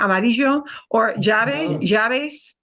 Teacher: And the Y, the Y, it's kind of a similar thing there. Okay, like the word amarillo, I get just a little bit of a J there